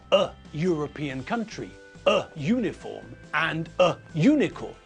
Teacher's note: and a unicorn all because the way we pronounce the you make it sound like there is a yo sound in the front of the word